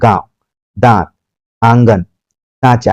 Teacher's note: अनुनासिक जो है इसकी जो ध्वनि है नाक और मुंह दोनों से निकलती है और इसमें उच्चारण में लघुता बनी रहती है ज्यादा समय तक · आपके नाक और मुंह दोनों से इसका उच्चारण निकल रहा है